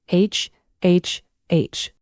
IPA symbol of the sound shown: h